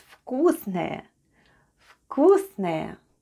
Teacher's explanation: The first letter is v, but it sounds like f in our case. Then goes k, u, s, then goes n, o, which is unstressed and is pronounced as a, and ye at the end.